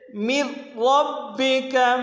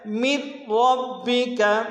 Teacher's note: ادغام تو کریں گے لیکن غنہ نہیں کریں گے، غننے کے بغیر ادغام ہوگا۔ · اگر نون ساکن اور تنوین کے بعد لام یا را آ جائے تو نون ساکن اور تنوین پر ادغام بلا غنہ ہوتا ہے، جیسے من ربک۔ اب یہاں پہ نون جو ساکن ہے یہاں پہ ہم غنہ نہیں کر رہے ہیں، ادغام تو کر رہے ہیں، من ربک۔ اگلا جملہ اکلا لمن، لمن میں بھی ادغام کر رہے ہیں لیکن غنہ نہیں کر رہے ہیں۔